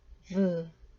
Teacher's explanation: 윗 이빨과 아랫입술이 마찰을 통해서 발음이 됩니다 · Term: 마찰음